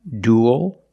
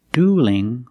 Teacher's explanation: dual with a dark L and dueling with a light l because the L is between vowels and the word dueling and